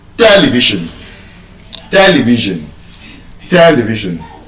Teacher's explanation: when you check the transcription of that word in Oxford dictionary, it is stressed on the first syllable